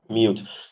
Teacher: there is a palatal yeah right in between c and u